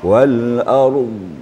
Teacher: Dhad itu kalau bisa lebih itbaq lagi. Lebih tertutup lagi. Wal ardh. Kedengaran sedikit ya.